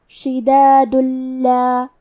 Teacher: لام حروف الادغام بغیر غنہ میں سے ہے تو ہم تنوین کو لام میں ملا کے بغیر غنہ سے لیکن تشدید کے ساتھ یہ حکم کو ادا کریں گے